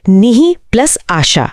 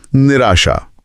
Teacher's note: हम यहां विसर्ग से पहले इ है जो अ या आ नहीं है और बाद में आ स्वर है। तो विसर्ग र बना और आ के साथ मिलकर रा हो गया। शब्द बना निराशा।